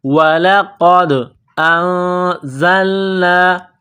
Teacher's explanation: نون ساکن کے بعد زا ہے، نون ساکن پر غنہ کریں گے، آواز ناک میں چھپائیں گے. اس ناک میں آواز چھپانے کو اخفا کہتے ہیں.